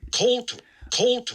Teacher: pretty clearly aspirated so just make sure you're listening for that uh but you can hear that h that huh right after